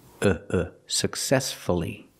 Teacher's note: the stress is on the second syllable so we pronounce the U